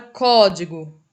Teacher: A sílaba mais forte é o có. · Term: proparoxítona